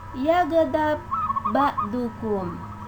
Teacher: bertemu dengan huruf ba berbaris sukun bertemu dengan huruf yang sama yaitu ba berbaris tasdid atau syadda. Cara membacanya adalah didengungkan atau dihentakkan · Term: Idgham mutamatsilain